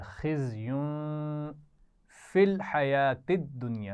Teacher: خزیون ایک تو اس میں زا رہی ہے سیٹی والی, دوسرا یا کے اوپر تنوین ہے اور بعد میں فا ہے تو یہاں پر غنہ ہو رہا ہے. خزیون فی الحیات الدنیا, یہ تینوں الفاظ ملا کر پڑھ جائیں گے تو توجہ سے پڑھیں گے.